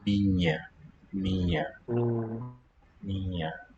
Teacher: I also feel like this word minha doesn't have full closure on the end. · it's being palatal. It's kind of the weakest closure of any of the nasals, I think. Oh, it sounds kind of incomplete.